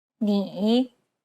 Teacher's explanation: Listen to an example which uses this tone. 你 It's the most unique tone out of all the tones because the pitch dips and then rises. 你 Imagine a ball bouncing on the ground as you make this tone. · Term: third tone